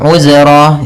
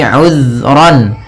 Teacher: Di sini uzran, hati-hati dalam pelafalan zal, usahakan di sini jangan sampai memantul, jangan uzra gitu ya, tapi uzran.